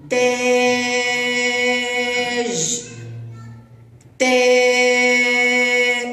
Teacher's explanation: لاعلى تا انه يكتب الف ويسمى المد بالالف او الالف الالف الالف الممدوده تنطق فتحه طويله لاعلى